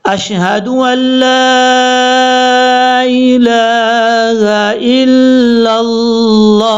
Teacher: جب وقف کریں گے تو ہا ساکن ہو جائے گا، اور لاسٹ پہ وقف کرتے ہوئے ہا کی آواز آنا لازمی ہے۔